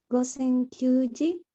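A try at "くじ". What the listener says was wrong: Hay un pequeñísimo error allí. Recuerda, el número 9 sí es Q, pero cuando está en contexto de hora cambia su pronunciación.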